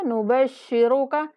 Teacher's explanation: را کو موٹا کریں گے